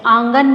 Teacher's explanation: चंद्रबिंदु का उच्चारण करते समय हमारे मुंह और नाक से ध्वनि निकलती है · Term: अनुनासिक